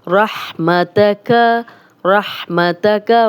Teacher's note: را پہ زبر ہے تو موٹا پڑھیں گے اور ہا کو ہا نہیں بنائیں گے، 2 آنکھوں والا ہا نہیں بنانا.